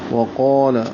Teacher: قاف کو پر پڑھیں گے، الف مدہ ہے، 2 حرکات لمبا کریں گے، الف بھی موٹا ہوگا، لام باریک ہے